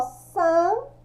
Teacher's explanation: Quando eu falo san, eu não pronuncio N